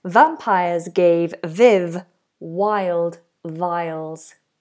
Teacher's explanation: Notice that S is voiced, so that sounds like a zed.